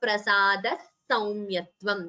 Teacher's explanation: And here prasadah saumyatvam, visarga followed by sa. We combine the sandhi and chant it as prasada saumyatvam, visarga sakara sandhi.